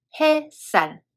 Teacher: When we make a word sunlight, two words are combined together, 해 and 살, and 사이시옷 is added, so it becomes 햇살. When we read it, 시옷 in the second letter becomes stronger, and 받침 시옷 is dropped.